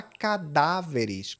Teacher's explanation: Já cadáveres, o peso está no dá. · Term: proparoxítona